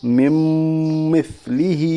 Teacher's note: نون ساکن کے بعد میم ہے، اس لیے نون ساکن کے بعد حروف یومن کے 4 حرفوں میں سے میم ہے، اس لیے ادغام ناقص ہوگا، یعنی ملا کر غنہ کے ساتھ پڑھیے۔ میم کے اوپر تشدید ہے، تشدید والے حرف کو مشدد کہتے ہیں، میم مشدد کے پڑھنے میں ایک الف کے برابر غنہ ہوگا۔ · میم کے اوپر تشدید ہے، تشدید والے حرف کو مشدد کہتے ہیں، میم مشدد کے پڑھنے میں ایک الف کے برابر غنہ ہوگا۔ ہا کے نیچے کھڑا زیر ہے، کھڑا زیر برابر ہے یا مدہ کے، اس لیے اسے ایک الف کے برابر کھینچ کر پڑھی